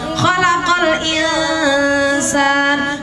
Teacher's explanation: itu bacaan ikhfa. Harus samar antara nun dan sin.